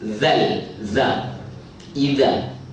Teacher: Hujung lidah di hujung gigi atas.